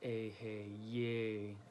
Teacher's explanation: The Yay is, it's bold at the end, so you want to kind of put emphasis on that last syllable